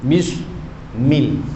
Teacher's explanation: Kalau kita tutup hidung, mil bermakna kita telah menafikan gunnah yang ada pada dia. Pada mim itu ada gunnah walaupun ketika dia berbaris.